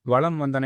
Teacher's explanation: வளம் வந்தன என்பதில் மகர மெய் அடுத்து வகர எழுத்து வருவதால் மகர மெய்யானது தனக்குரிய அரை மாத்திரை அளவிலிருந்து குறைந்து 1/4 மாத்திரை அளவில் ஒலிக்கிறது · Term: மகர குறுக்கம்